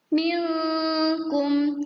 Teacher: ada nun sukun diikuti huruf kaf atau nun bertemu huruf kaf, dibacanya ihfa